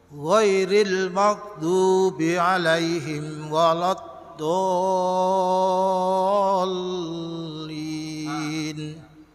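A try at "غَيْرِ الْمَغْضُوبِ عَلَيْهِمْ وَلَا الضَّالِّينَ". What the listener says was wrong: Alhamdulillah bagus semua kecuali huruf Shad ya, jadi diperbaiki saja kita insyaallah.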